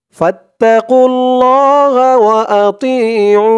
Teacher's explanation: উ বলে 3 আলিফ টান দিয়ে এই নুনকে ধরবে নুনের নিচে জেরটা সাকিন হয়ে যাবে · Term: মদ্দে আরজি